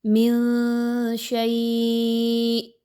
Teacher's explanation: نون کی آواز کو واضح نہ پڑھتے ہوئے تھوڑی دیر آواز ناک میں لے کر جائیں گے، روک کر رکھیں گے